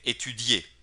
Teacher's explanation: Cuando digo étudier, suena claramente la terminación y la i es muy leve, étudier. Pero si desaparece la terminación e, pues la i es lo que más suena en este verbo étudie, étudie, étudie.